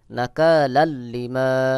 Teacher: এখানে দুই জবর তানবিন এরপরে ইদগামের হরফ লাম চলে আসছে এখানে গুন্না ছাড়া মিলায় পড়তে হবে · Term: গুন্না ছাড়া মিলাই